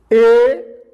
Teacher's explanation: ये जो है ए और ए का उच्चारण स्थल जो है कंठ और तालु, ए कंठ और तालु दोनों से मिलाकर बोला जाता है